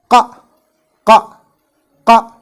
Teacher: the deepest part of the tongue or the root of the tongue should touch the soft palate at the back of the mouth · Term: Qaf